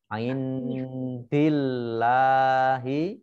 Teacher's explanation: dengan huruf Dal berarti baca samar-samar bacaan Ikhfa main Dil lahir Allahnya dibaca tipis karena hanya kasrah